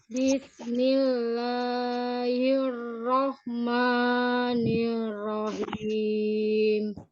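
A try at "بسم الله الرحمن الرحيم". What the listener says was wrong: sama ma-nya jangan terlalu panjang. 2 harokat aja. Matobi'i. Bismillahirrahmanirrahim. Nanti dipendekkan lagi ya.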